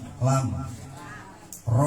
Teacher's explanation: Dari ujung lidah tuh keluar dua huruf ya, lam sama ro. Jadi ini ron-nya dimasukin ke lam.